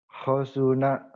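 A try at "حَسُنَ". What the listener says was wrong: Ha, bukan ho, ha.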